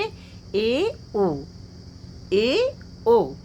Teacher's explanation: अर्ध संवृत जो है जिनके उच्चारण में मुख आधा बंद रहता है।